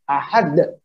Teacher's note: Mengakhiri sautul qalqalah. Suara qalqalah itu bi hamzatin sakinatin. Dengan hamzah yang sukun.